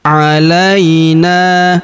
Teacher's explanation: huruf na kita panjangkan dua harakat karena terdapat alif di depannya.